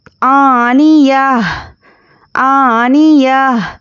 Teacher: آخری حرف پر جزم دے کر سانس توڑنا ہے کیونکہ یہاں پہ آیت ہے